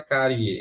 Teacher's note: ela começa com i que é a mais fraca e ela termina com e que é a mais forte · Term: ditongo eh crescente